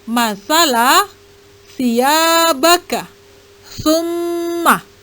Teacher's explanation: pada ujung lidah dengan gigi atas huruf sa, zal, dan zo. baik ketika berharkat hidup maupun mati.